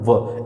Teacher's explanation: अर्थात व का उच्चारण स्थान जो है वो दंत और ओष्ठ दोनों की सहायता से होता है। अगर इन दोनों की सहायता नहीं ली जाए तो व का उच्चारण जो है वो असंभव है। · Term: दंतोष्ठ